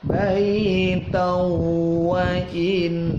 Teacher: nunnya ada tasydidnya, dibaca gunnah, didengungkan, udara keluar lewat hidung